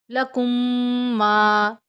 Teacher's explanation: میم ساکن کے بعد میم غنہ کریں گے · میم ساکن کے بعد دوسری میم آ جائے تو ادغام شفی ہوگا، غنہ کریں گے، آواز ناک میں لے کے جائیں گے۔